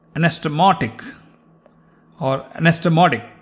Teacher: when it's between vowels, the T sometimes sounds like a little altered D. But you are between D like David and T like Tom.